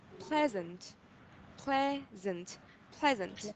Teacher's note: the stress is on the first syllable, pleasant